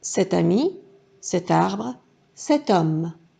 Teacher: Cette CET est toujours suivie d'un son vocalique. Nous devons donc faire l'enchaînement du T avec le mot qui suit.